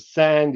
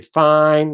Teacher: in all these dialects, you don't pronounce the final d. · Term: loss of final d.